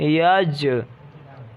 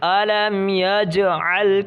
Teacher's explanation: ان پر قلقلہ ہوگا. یعنی ان کی آواز مخرج سے لوٹتی ہوئی واپس آئے گی. جیسے یا جیم زبر یج.